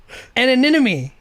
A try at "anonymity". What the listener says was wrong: There's a T on it. Anonymity. Anonymity.